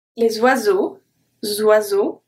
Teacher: the S is transferred to oiseau, makes a Z sound